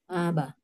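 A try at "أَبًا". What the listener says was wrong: sip, mantap ya. Jadi aba ya.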